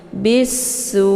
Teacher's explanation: karena sesudah alif lam terdapat huruf Syamsiah yaitu Sin ya sa cara bacanya banya dimasukkan ke dalam huruf Sin ataupun dileburkan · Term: Idgham Syamsiah